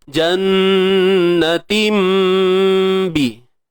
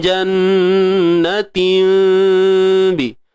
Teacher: Kita tukarkan bunyi tanwin kepada mim. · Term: iqlab